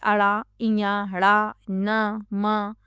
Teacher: उच्चारण करते समय हवा नाक से बाहर निकलती है। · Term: नासिक्य व्यंजन